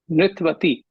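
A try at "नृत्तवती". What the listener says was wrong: Nrittavati. Nrittavati. Atra akara asti, tasya uchcharanam karaniyam.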